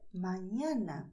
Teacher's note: não é um som nasal forte, como seria em português, amanhã. Então, você não deve transferir os sons de amanhã para esta palavra espanhola, que é mañana.